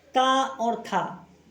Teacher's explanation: ता और था, ये अघोष व्यंजन के अंतर्गत आते हैं